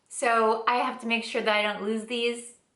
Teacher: The Z sound in lose and the TH sound in these are combined a little bit.